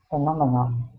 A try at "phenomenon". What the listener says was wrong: Okay, good. Good.